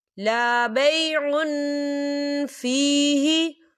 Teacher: تنوین کی آواز کو ہم ناک میں چھپائیں گے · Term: اکفا